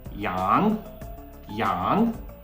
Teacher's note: it's a second tone your voice should be rising